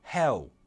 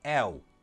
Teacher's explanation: because it's a dark L, we can change it for a wuh sound